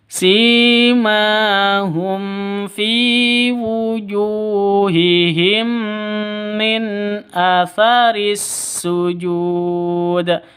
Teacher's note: mim mati bertemu dengan mim nah ini disebut dengan idgham mimi atau idgham mislain karena sama mim mati bertemu